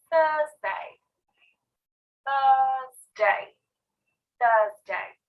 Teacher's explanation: notice that i don't pronounce the r